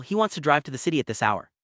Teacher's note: he wants to drive to the city at this hour is structured just like a statement but the rising tone makes it a question